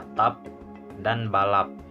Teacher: alofon P aksen merupakan bunyi tak lepas jika terdapat pada suku kata tertutup, contohnya pada kata atap dan balap.